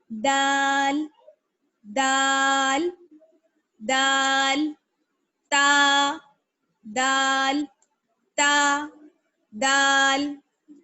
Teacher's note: زبان کی نوک اور ثنایا علیہ کی جڑ